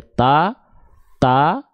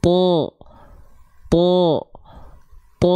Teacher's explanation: a karena fathah itu basicnya a ta ta ta ta cuman sekarang kita aktifkan sifat istilla pangkal lidah diangkat maka bunyinya begini yang asalnya ta ta menjadi th th th kalau di pangkalnya